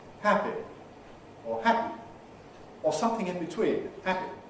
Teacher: more and more younger people now pronounce this with a quality more like the e of sheep